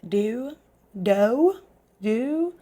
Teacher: we kind of just add a w on the end, the sound of a w